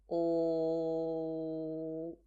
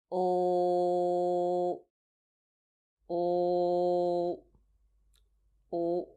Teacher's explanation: You should notice a slight vibration of your vocal cords because ul is a voiced sound. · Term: ul sound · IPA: /l/